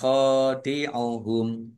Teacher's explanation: Kha fathah alif mat tabi'i dibaca panjang dua harokat. Humnya wakof dan dibaca pendek karena tidak ada tanda panjangnya.